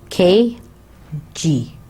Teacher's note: So the back of the tongue makes firm contact with the soft palate. The air is trapped for a short time and then breaks the obstruction with a slight explosion. · the air comes out in an explosive way now Weller plosives K and G are articulated with the back of the tongue against the soft palate so it's the back of the tongue touching the soft palate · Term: velar explosives